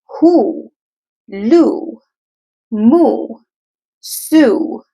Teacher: every vowel that existed earlier changed into oo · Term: second sounds